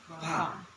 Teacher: ketika ada desisnya bibir dia ditekan dia sudah benar dianggap baca fa